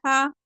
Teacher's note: اقصی حلق سے بغیر دباؤ کے، یعنی کہ جہاں سے حمزہ نکل رہا تھا نا بنا دباؤ کے، حمزہ زبر آ، ویسے ہی ہا زبر ہا۔